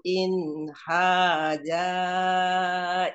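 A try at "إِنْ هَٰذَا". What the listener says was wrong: in haja bukan in haja in haza za tadi makhraj za za za itu keluarnya dari mana atas ujung lidah menyentuh atau bertemu dengan gigi seri atas za za coba sedikit dikeluarin za ujung lidahnya za dikeluarin sedikit za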